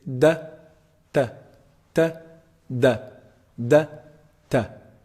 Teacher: the top of the tongue hits the upper incisors the roots of the upper incisors